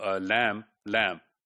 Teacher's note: consonants like in the case of lamb lamb the a sound the a vowel it is just acquiring some nasal features